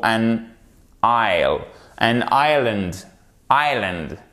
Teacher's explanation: on n'entend pas le S dans les deux mots